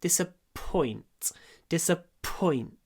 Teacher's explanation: мы не говорим disappoint, мы не делаем громкий ой, мы делаем паузу перед п.